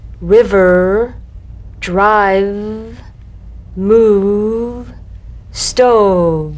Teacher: You'll feel a gentle, dark, buzzing vibration on the lower lip. All suggestion of the F must be out of there, otherwise your V sounds like an F.